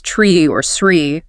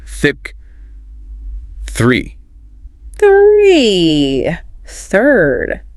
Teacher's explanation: for a word like 3, you don't even use your voice box, just air